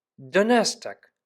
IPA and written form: ˈdɔnɐstaːk (Donnerstag)